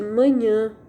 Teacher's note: É o caso de manhã. Então, dá a impressão que o som saiu pelo nariz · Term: som nasalizado